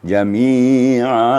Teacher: kalau ain itu wastul halak di tengah-tengah tenggorokan.